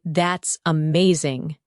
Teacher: your tone rises with excitement.